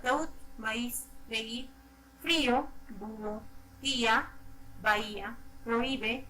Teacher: una vocal cerrada tónica o con mayor fuerza de voz unida a una vocal abierta átona o con menor fuerza de voz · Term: hiato